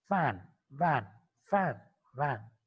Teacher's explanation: The lower lip is raising towards the upper teeth. Upper teeth is slightly brushing to the inner part of the lower lip. And when that contact is released, that closure is released, then only we can produce f, w, f, w. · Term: labiodental